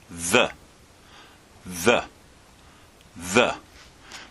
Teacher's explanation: you just put your tongue between your teeth and push the air through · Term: hard th sound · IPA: [ð]